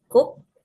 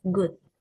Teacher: Ke is voiceless velar plosive, while ge is voiced velar plosive.